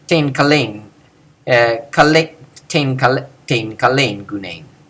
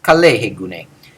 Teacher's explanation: Notice that all these are said with the same low tone of voice.